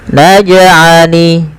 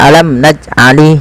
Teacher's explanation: karena ia ada bacaan qalqalah yang artinya memantul